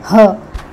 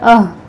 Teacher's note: जब हम ह बोलते हैं, ह, तो यहाँ जो हलक का सीने की तरफ वाला हिस्सा है यहाँ पर हरकत होती है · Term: ह का मखरज